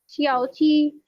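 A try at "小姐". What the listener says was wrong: श्याओ जी नहीं, श्याओ जिए, बट ये ओल्ड वन है।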